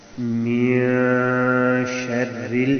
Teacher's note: لفظ اصل میں نون جو ہے وہ ختم ہو جاتا ہے، اس کی آواز ناک میں چلی جاتی ہے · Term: اخفا